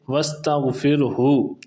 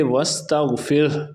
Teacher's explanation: stop کی وجہ سے آخر پہ ہا کی پیش کو ختم کر دیا گیا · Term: وقف